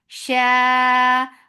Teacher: mad muttasil wajib, make it 4 counts long